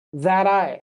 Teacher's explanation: So that I blends together. So you might say that I, but you don't need to separate it.